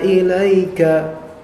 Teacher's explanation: seperti ada sedikit pemanjangan namun tidak sampai dua harakat ada sedikit pemanjangan namun tidak sampai dua harakat kita lanjutkan